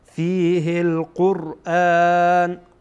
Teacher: وقتی که را خودش ساکن باشه ما قبلش پیش داشته باشه پر خوانده میشه